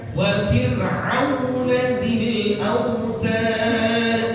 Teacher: Jadi tips nanti ada tafkhim dan tarqiq. Nah, ini karena ra-nya sukun lalu sebelum ra ada huruf fa yang arahnya kasrah, maka huruf ra ini dibaca dengan tarqiq tipis